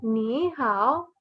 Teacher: And the third tone goes down and back up.